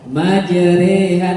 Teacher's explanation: Bacaan antara fathah dan kasroh atau bacaan mereng pada bunyi roh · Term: bacaan imalah